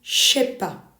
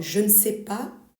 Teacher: Step three, the dropping of ne. In familiar French, the first part of negative structure, the ne, is dropped. So, in the phrase I don't know, je ne sais pas, loses its first negative marker completely in casual French.